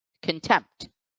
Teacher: the apostrophe is over the second syllable so tempt is the syllable which gets accented